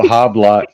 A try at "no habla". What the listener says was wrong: You don't pronounce the H. It's no habla.